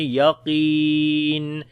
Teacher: قاف کو موٹا پڑھیں گے، یا مدہ ہے یہاں پر لمبا بھی کریں گے